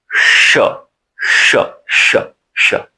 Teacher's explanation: यह जो है इसका उच्चारण मूर्धा से होता है। अंदर से ध्वनि निकलती है तो हमारी जीवा मूर्धा में टच करती है। यानी कि ध्वनियों को मूर्धा पर जाकर अवरुद्ध करती है तो अंदर से ध्वनि निकलती है।